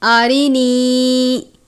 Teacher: را کے نیچے زیر ہے، را کو باریک پڑھیں گے، نون یا زیر نی، یا ساکن سے پہلے زیر ہے یا مدہ۔